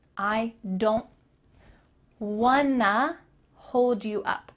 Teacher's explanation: Want to is linked together and makes wanna.